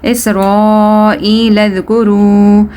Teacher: Waw madda, waw you need to stretch it according to 1 alif.